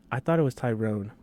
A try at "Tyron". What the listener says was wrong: No, it's Tyron. It's definitely not no E in his name. It's Tyron Woodley.